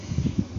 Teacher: Sebab lafaz Allah sebelumnya didahului harakat fathah atau barus di atas. Kemudian lamnya berharakat fathah berdiri panjangnya dua harakat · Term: mad asli